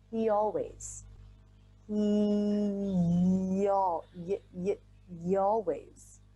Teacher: the y is a glide consonant so we can use it to smoothly glide between words